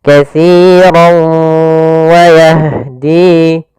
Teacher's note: katsirau masuk sambil ke rongga hidung kita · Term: idgham bi gunnah